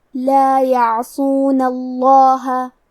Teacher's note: آخری میں نون پہ زبر ہے، لہذا ہمیں لفظ الجلالہ مطلب کلمت اللہ کے لام کو تفخیم سے مطلب موٹی آواز میں پڑھنا ہے